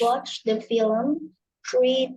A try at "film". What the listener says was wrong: Bacanya bukan film. Kalau film bahasa Indonesia, film.